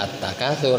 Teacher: alif lamnya tidak terbaca, langsung ke huruf ta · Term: asy-syamsiyah